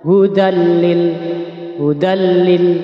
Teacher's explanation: gunah hurufnya ada dua Idam bila gunah yakni lam dan ro bacanya ini tanpa mendengung